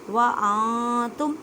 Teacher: نون ساکن کے بعد تا ہے، حروف اخفا میں سے ہے، اخفا کریں، ان نہیں کہنا۔